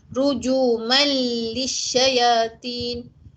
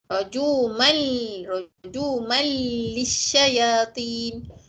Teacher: Kita tak boleh dengung sebab tanwin bertemu dengan lam, idgham bila gunnah, tak boleh dengung, kena masukkan lam dalam mim ni.